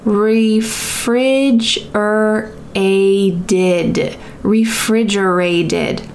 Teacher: That final T is gonna sound like a D in American English because it's surrounded by vowels.